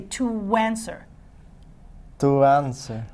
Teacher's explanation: I want you to use a W. I want you to say to answer.